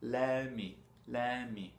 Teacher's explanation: Si on saute le T, c'est juste let me.